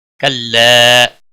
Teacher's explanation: کلا مد منفصل ہے، 3 الف کے برابر کھینچ کر پڑھیں گے